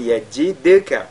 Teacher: le dal, lui avec al-qalqala. Donc yajidka.